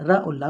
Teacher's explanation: दंत मूल के द्वारा रा और ला का उच्चारण होता है।